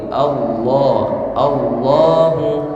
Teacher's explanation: ketika dia tebal punggung lidahnya naik ke dekat langit-langit